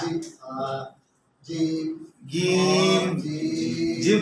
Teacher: জিম পড়ার সময় আমরা জিহ্বার মধ্যখানে চাপ দেবো বেশি